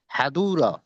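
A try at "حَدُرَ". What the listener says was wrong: মাশাআল্লাহ অনেক সুন্দর হয়েছে।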